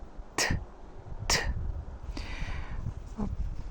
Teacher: when we pronounce t we don't use actually our vocal cords we just make this sound by moving air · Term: voiceless sound